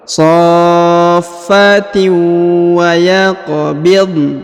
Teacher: Huruf qaf berharokat sukun maka dibaca pantul atau qalqalah.